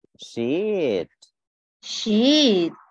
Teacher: nó sẽ lên một chút rồi nó xuống. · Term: cái điệu tiếng Anh